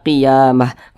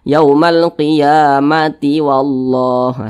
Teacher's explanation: Kalau berhenti jadi H Kalau diteruskan menjadi huruf ta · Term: Ta marbutah